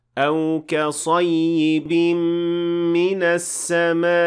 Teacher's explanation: And the first case of which is when you stop at a hamza that comes after a med. The stress in this case functions as a way to show that there is a hamza at the end of the word. Otherwise, the hamza will kind of disappear and becomes unaudible, since hamza is essentially stopping the airflow, like in this example.